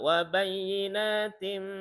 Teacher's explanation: idgham biguna, tanwin bertemu mim